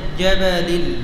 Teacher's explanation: জিমে বাতাস বের হবে না জাহার সিদ্দার হরফ জিম কি জাহার শিদ্দা ইস্তিফাল ইনহিরাফ শিদ্দা ইস্তিফাল